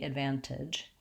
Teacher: we do say the T sound in this word with an aspirated T